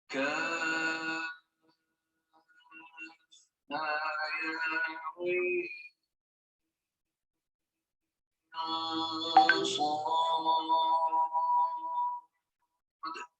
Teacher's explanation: dengung antara Ain ke Sad